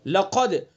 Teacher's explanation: दाल के अंदर कलकला करेंगे चूंकि दाल काफ ता बाजिम दाल में से दाल है जिसके अंदर कलकला होता है।